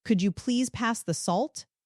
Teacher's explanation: That rising intonation on salt for a question.